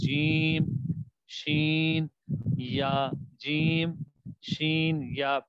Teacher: یہ تینوں ایسے حروف ہیں کہ جس میں زبان کا درمیانی حصہ اوپر تالو کی طرف اٹھ رہا ہے، چپک نہیں رہا، صرف اٹھ رہا ہے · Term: مخرج نمبر 7